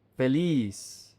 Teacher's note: The Z is an S in Latin America. In Spain, it's pronounced like a TH, so feliz.